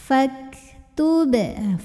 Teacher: Fak ada hamasnya, ada anginnya,